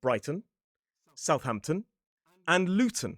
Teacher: So it’s /t/, a schwa - the vowel reduces - and an /n/ sound. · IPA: /tən/